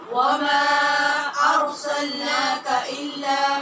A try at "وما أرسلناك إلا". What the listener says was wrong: ناکا نہیں، وما أرسلناك إلا